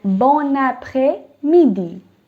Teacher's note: when there's a consonant followed by a vowel, in this case, N is the consonant, followed by a vowel, which is A, okay? You will pronounce them as one. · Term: liaison